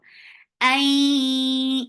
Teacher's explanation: idgham with gunna, so keep the sound in your nose for a longer time. Ay keep ya very soft.